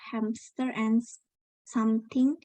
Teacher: When we pronounce the word hamster and something at a regular speed, most of us will say and hear hamster and something with a p. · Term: Insertion